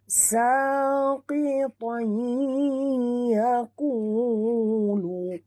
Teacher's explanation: Tanwin baris 2 atas bertemu dengan ya. Kita kena masukkan sepenuhnya bunyi tanwin po ini ke dalam ya disertai dengung 2 harakat. Ya, di sini hukumnya idgham ma'al gunnah.